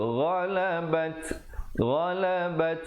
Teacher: ada hamasnya, bunyi angin di situ